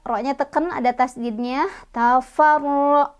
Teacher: Ro-nya juga dia dibaca secara tafkhim ya, karena ro-nya berbaris fathah